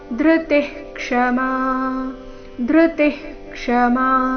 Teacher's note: ವಿಸರ್ಗದ ಉಚ್ಚಾರಣೆ ಇಲ್ಲಿ ಹ ರೀತಿ ಬರಬೇಕು